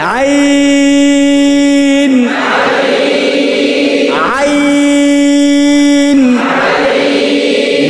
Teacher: মাখরাজ হলো খলকের মধ্যখান হইতে